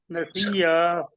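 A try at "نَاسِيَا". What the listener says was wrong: नसीया नहीं है, देखिए जो आप या को तशद्दुद कर रहे हैं।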